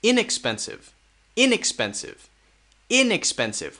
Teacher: We focus more on the in